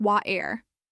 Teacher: In American English, you might hear it pronounced clearly with a T sound, like water. In British English, the T might be softer or replaced by a glottal stop